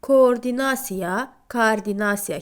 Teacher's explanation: Eyni cinsli qoşa o saiti ilə yazılan sözlərdə o uzun a kimi tələffüz olunur